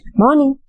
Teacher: when you say this morning it is in the rising intonation